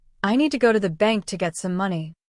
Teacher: The stressed words are need, go, bank, and money. The rest of the words are quick and soft. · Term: rhythm of English